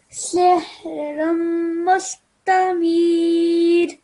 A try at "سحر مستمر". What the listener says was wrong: So that was a good effort, but the meme that has a shadda on top, a tashdid on top, this needs to make a meme ghunna sound.